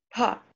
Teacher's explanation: you have to emphasize when you utter that consonant, prana, air, more air is breathed out, pa, you have to say. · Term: Mahaprana